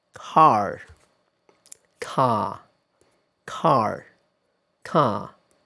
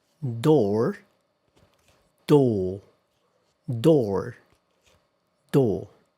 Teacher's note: So, in American English, the the r after a vowel is almost always pronounced. In most varieties of British English, however, the r after a vowel is usually not pronounced.